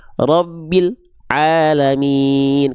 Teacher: Banyak orang melafalkan pada bagian rabbil, l-nya itu diputus.